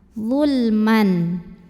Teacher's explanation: tanwinnya ini dibaca dengan jelas, jadi masih bunyi N dan tidak perlu ditahan. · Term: idhar halqi